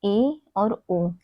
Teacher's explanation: ए और ओ, इसको बोलने से हमारा मुख द्वार आधा बंद रहता है इन स्वरों के उच्चारण से। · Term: अर्ध संवृत